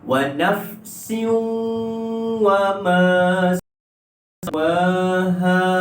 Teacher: Wa nafsin wa itu dengung 2 harakat, masuk dan dengung idgham ma'al gunnah. Caranya adalah kita muncungkan mulut kita sebab apa huruf waw.